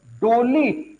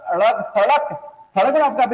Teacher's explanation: इसके उच्चारण में बेटा जीभ ऊपर जाती है इसलिए इसको उत्क्षिप्त व्यंजन कहते हैं